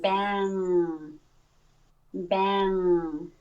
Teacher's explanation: My tongue is not doing anything except lifting up in the back a little bit. And I'm thinking about that NG sound being in my nose. · the sound is coming completely through the nose. I'm blocking it off with the back of my tongue from it doesn't enter my throat at all.